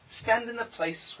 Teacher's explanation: the n can cancel the th